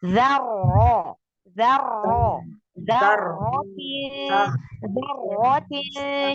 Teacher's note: Ketika ro, jangan lupa ditebalkan.